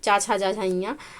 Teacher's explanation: चा वर्ण का उच्चारण स्थान जो है तालव्य है